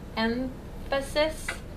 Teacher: we're anticipating that f sound coming and so we produce the m sound as a labiodental